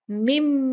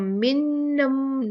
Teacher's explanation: अब बाकी उसके बाद देखते हैं कि नून साकिना है मीम के बाद, और फिर उसके बाद फिर मीम आया है। तो नून साकिन के बाद अगर मीम आ जाए तो नून को मीम से मिलाकर पढ़ा जाता है, ये मुदगम हो जाता है मीम के अंदर। जैसे हम यहाँ पर पढ़ेंगे मिम, नून को नहीं पढ़ेंगे, नून इसके अंदर दोनों के बीच में मुदगम हो गया, मिम। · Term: इदगाम